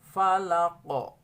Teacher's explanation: kalau qaf diwaqafkan, disukunkan, maka dia memiliki sifat qalqalah, ya. Jadi membacanya falaqo.